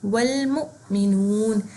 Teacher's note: حمزہ ساکن ہے اور اس سے پہلے پیش ہے, تو یہاں پہ جھٹکا تھوڑا سا ہم دیں گے سپارک جتنا. جیسے یہ سپارک کی تصویر آئی ہے, جیسے ہم کبھی سوئچ ڈالنے لگے تو ہلکی سی سپارک آتی ہے تو ایک جھٹکا سا لگتا ہے, اس کو کہتے ہیں جھٹکا دینا.